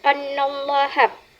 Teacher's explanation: Annallaha didengungkan dikarenakan nun yang bertasydik termasuk kepada tajib ghunah. Jadi pada kalimat tersebut harus didengungkan dikarenakan ada nun yang bertasdik yang termasuk kepada tajibu ghunah. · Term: tajibu gunnah